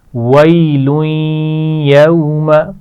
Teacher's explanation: غنہ کو مد کی طرح نہیں کھینچ سکتے، ویلویں بہت لمبا نہیں کریں گے، بس غنہ اتنا کرنا چاہیے کہ واضح ہو جائے کہ یہاں غنہ کیا گیا ہے.